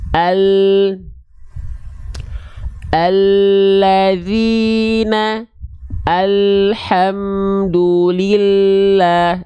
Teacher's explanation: huruf lam itu dilafalkan dari tepi lidah tepi lidah itu samping atau sisi lidah